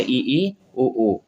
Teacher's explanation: उच्चारण में मुख द्वार लगभग बंद रहता है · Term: संवृत